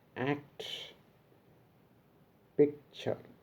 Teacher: the first plosive is not fully pronounced. Such plosives are called incomplete plosives.